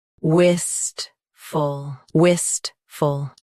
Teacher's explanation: Stress wist. Keep full soft and quick.